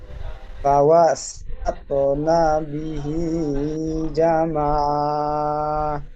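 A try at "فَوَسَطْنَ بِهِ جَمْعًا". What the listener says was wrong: ফাওয়াসাত না বলে নুন টান হয়ে যাচ্ছে, নুন টান হবে না। আর জাম আ বলছেন, জিম মিমটি জিম মিমের সাথে যুক্ত হবে, একালিফ গুন্না হবে, গুন্না হবে না এখানে।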